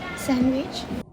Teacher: When the participant pronounced the word, it was heard as sandwich. In this version, the d sound is missing. This means the participant said sandwich rather than sandwich. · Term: elision